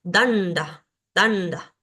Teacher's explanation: como es una palabra que tiene dos sílabas la voy a estar acentuando en la primera porque en la última No puedo ahora si conoces algo de · la palabra danda danda estos puntitos debajo nos nos indican que estas letras son sonidos cerebrales Por ende tengo que llevar la lengua hacia el paladar superior